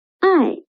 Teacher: i means love i is the final and it is the fourth tone